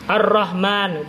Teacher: lamnya itu masuk ke ro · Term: Lam Syamsiah